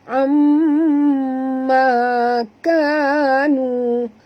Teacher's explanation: Jadi amma, bukan amma perempuan ni, bukan hamzah ni, bukan alif tapi ain. Amma dengung dulu baru sebut ma